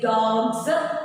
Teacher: ഗ എന്നുള്ളത് വോയിസ്ഡ് ആണ്. വോയിസ്ഡിൻ്റെ കൂടെ എപ്പോഴും വോയിസ്ഡ് ആയിട്ടുള്ള പ്ലൂറൽ ഫോർമേഷൻസ് ആണ് ആഡ് ചെയ്യേണ്ടത്